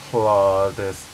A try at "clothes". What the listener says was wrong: No, clothes. There's no E in it. Don't say the E, so it's clothes.